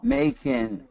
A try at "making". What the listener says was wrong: No, see, when you do that, the tip of your tongue is forward. It shouldn't come forward.